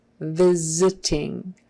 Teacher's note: that s turns into a z